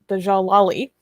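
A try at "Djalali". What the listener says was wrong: Jalali. I think the D is silent.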